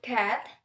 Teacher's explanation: When articulating k, the vowel cords do not vibrate. Airflow is momentarily blocked at the velum and then released. For example, in the word cat, the sound k is felt as a brief stop of airflow before release. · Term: stop consonant